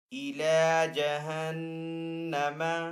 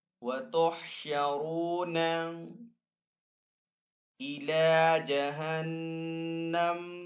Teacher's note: ستغلبون وتحشرون الی جہنم، نون کے اوپر یہاں پہ تشدید ہے تو یہاں پہ نون مشدد ہے، تو نون مشدد کے اوپر ہمیشہ غنہ ہوتا ہے تو یہاں پہ نون کے اوپر غنہ کریں گے